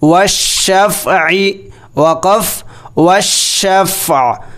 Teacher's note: واو شین زبر والشین فا زبر شف والشف عین زیر عی والشفع وقف والشفع. عین کو ساکن کر دیا جائے گا وقف کی صورت میں